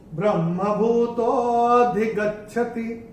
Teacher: ये जो तो के बाद जो अवग्रह आ रहा है तो इसको थोड़ा सा खींच के बोलेंगे। ये एक्चुअली अधिगच्छति है, भूतः अधिगच्छति, ओके, ये ऐसे करके ब्रह्मभूतो अधिगच्छति, ये ऐसे करके आएगा।